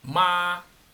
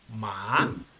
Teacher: tiene que empezar más bajo y después ir subiendo un poco la voz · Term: tono 2